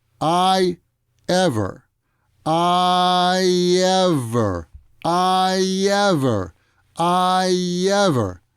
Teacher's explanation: if you pronounce i ever without stopping there's a little bit of a y sound that comes up between i and ever